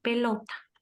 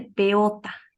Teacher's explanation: está omitiendo el fonema l Entonces de esa manera se habla de una omisión del fonema